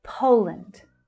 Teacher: So here, in the first stressed syllable we have the /əʊ/ as in 'go' vowel sound